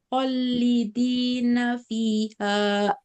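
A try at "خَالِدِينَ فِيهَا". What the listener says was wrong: Bukan hol, tapi ho panjang dulu. Holidi. Ini kan juga sama panjang, Ya, ini kan panjang ya, supaya nggak curi nafas.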